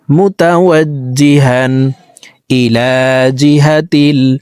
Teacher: এলামেও খাড়া জবর হবে, উপরের দিকে ধাবিত করে লাম হরফকে একালিপ টেনে পড়ব